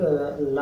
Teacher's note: और पार्श्विक वर्ण किसको कहते हैं, जिसका उच्चारण करते समय हवा जीभ के, जैसे हवा है वह जीभ के साइड से निकल जाए